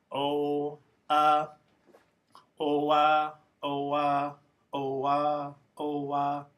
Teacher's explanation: start saying O and then switch to uh without stopping